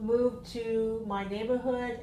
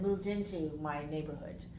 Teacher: Another is linking. So moved into has a D that comes into the I, the letter I has a sound I.